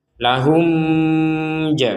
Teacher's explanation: mim mati bertemu Jim kita Jelaskan jadi harus dibaca jelas tidak boleh didengung